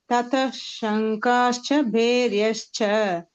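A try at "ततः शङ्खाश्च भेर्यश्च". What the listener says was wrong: Kha is Mahaprana, Bhe is Mahaprana. And you have to put one ish. You have to remove that visarga.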